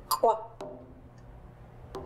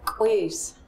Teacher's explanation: the rounded glottalized KW